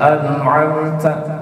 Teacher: Seperti kayak an'amta, taknya hanya sedikit hamasnya, dia berlakunya agak lemah. Tapi ketika huruf ta, maka karena ini dibaca waqaf jadi sukun, maka hamasnya lebih tebal, lebih kelihatan.